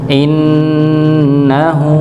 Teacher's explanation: huruf nun yang dia bertasydid maka didengungkan ditahan terlebih dahulu ng ditahan terlebih dahulu dengan dengung ditahan dulu.